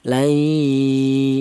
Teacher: cara bacanya nun mati ini langsung menyatu ke huruf ya, itu namanya idgham. Adapun artinya bigunnah yaitu dibaca dengan suara berdengung, yaitu panjangnya dengung dua ketukan. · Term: idgham bi gunnah, idgham bigunnah